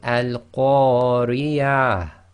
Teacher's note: you've got to just bring out a tiny bit of a ha sound from the bottom of your throat. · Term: ha sakin